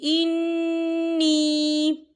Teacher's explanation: انی یہاں پر نون مشدد ہے تو یہاں پر غنہ بھی ہوگا، اور نی یہاں پر یا مدہ ہو رہا ہے، یا ساکن سے پہلے زیر ہے تو ہم اسے 2 حرکت کے برابر کھینچ کے پڑھیں گے۔